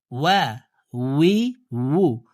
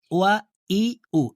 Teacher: ঠোঁট গোল করে ওয়াও হরফের উচ্চারণ করতে হবে, হামজার উচ্চারণ করা যাবে না। আমরা অনেকে ওয়া ই উ এভাবে পড়ে থাকি।